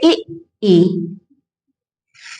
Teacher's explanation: इन स्वरों का उच्चारण करते समय जीभ का बीच का हिस्सा तालु से छूता है। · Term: तालु स्वर